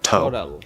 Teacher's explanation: the word total, that first syllable is stressed, so we have a nice strong T, Total. But then in the middle, we have the letter T at the start of an unstressed syllable, so it's going to be a flapped D sound, total.